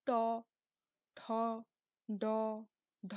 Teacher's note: যখন শক্ত তালুতে গিয়ে স্পর্শ করে, তখন উচ্চারিত হয় ট, ঠ, ড, ঢ ইত্যাদি